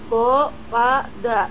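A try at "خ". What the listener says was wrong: Kho, bukan go. Kho.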